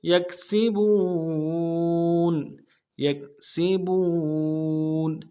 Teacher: یکسبون یکسبون، یا کو کاف کے ساتھ ملانا ہے نرمی سے، سین کی سیٹی باریک ہوگی